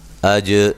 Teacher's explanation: جیم پہ قلقلہ کریں گے، حمزہ کو تحقیق سے پڑھیں گے